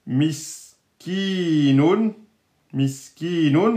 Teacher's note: Là, on a bien le ya scoun mais bon précédé d'une kasra donc on sait que c'est la prolongation mais voyez il écrivent comme ça miskinun il y a un ya qui est donc une voyelle longue étant donné que c'est la prolongation de la kasra